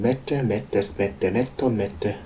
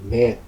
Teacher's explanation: It has a long vowel followed by a long consonant. It's a bit hard to say, but there is a difference.